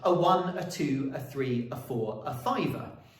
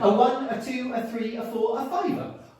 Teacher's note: if we give it a feminine ending that means we add an extra 11th unstressed syllable onto the end